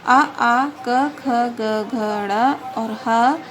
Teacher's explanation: कंठ से आ, क, ख, ग, घ, ड़ और ह इन वर्णों का उच्चारण किया जाता है और इनको कंठव्य वर्ण कहा जाता है।